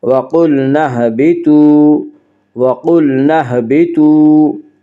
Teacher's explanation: قاف کو پر پڑھیں گے، قاف حروف مستعلیہ میں سے ہے